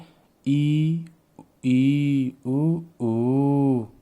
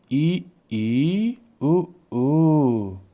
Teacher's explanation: वे स्वर जिनके उच्चारण में मुख बहुत कम खुलता है। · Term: समवृत